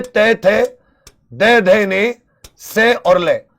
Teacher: इनका दांत से उच्चारण। जिनका उच्चारण ऊपर के दांतों पर जीभ लगने से होता है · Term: दंत ध्वनि